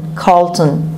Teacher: O-N is pronounced as schwa